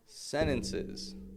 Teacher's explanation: there's a T in sentences. Why didn't he pronounce the T? NT combination.